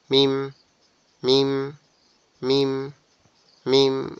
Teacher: মিম হচ্ছে আমাদের দুই ঠোটে শুকনা জায়গা একসাথে লেগে আওয়াজটা ছেড়ে দিবে